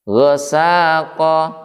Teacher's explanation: Maka yang diayun adalah huruf sin, bukan ghain lagi. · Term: mat tabi'i